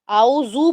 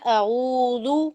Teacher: اب یہ ذال کا مسئلہ ہے اس پکچر کے ساتھ ریلیٹڈ. ذال جو ہے وہ طرف اللسان میں رأس اللسان کی جگہ سے نکالا جاتا ہے